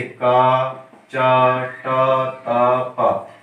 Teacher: प्रत्येक वर्ग का पहला वर्ण क्या कहलाएगा, ये अल्प प्राण अघोष वर्ण कहलाएगा।